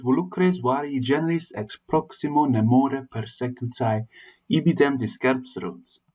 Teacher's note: the plosive alliteration of the p sounds to emphasize a sense of violence · the alliteration of the w sounds, the v. In Latin, it's a w sound